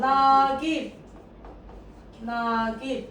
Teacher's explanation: A da uzanır. Q da olduğu kimi qaldı. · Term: Uzanma